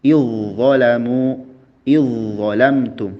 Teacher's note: Leburkan huruf zal sukun ketika menghadapi huruf dho seperti pada kata idzalamu idzalamtum. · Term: melebur